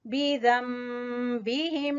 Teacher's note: नून साकिन के बाद बा, नून की आवाज को हमने मीम में बदल कर पढ़ना है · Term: इकलाब